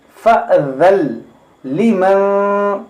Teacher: यहाँ पर नून की आवाज़ नहीं आएगी, नून लाम में दाखिल होगा, यहाँ पर इदगाम होगा, फ़अज़ल लिमन।